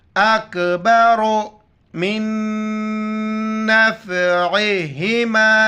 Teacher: را پر پیش موٹا کر کے پڑھیں گے